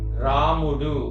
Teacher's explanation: అది గురువు లఘువు లఘువు రా అనే దీర్ఘం కాబట్టి